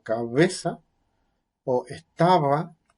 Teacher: bilabial, pero se cierran los labios o se juntan de forma de que salga una vibración, una fricción sonora, algo así como "bu". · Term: bilabial fricativa sonora